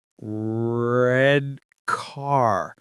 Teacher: My tongue is curling back.